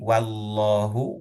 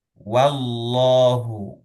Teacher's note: Oke, wallahu kita perhatikan lagi wallahu wanya tipis tapi Allahnya tebal. Dan ya, tipis dan tebal berurutan, tidak saling mempengaruhi.